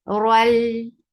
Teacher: Al for fatha open jaws attach it lam. This is a sound without ghunnah so you're not keeping the sound in your nose at all. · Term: idgham without guna